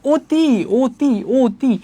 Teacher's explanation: অ এর সংবৃত উচ্চারণ হলে কিসের মত হবে উচ্চারণটা ও এর মত হবে